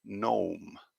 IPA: nəʊm